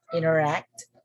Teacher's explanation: So the sound of T here is silent. Inner, we just say inner, interact. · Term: silent T